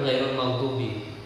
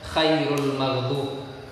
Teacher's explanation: Yang gha menjadi kha.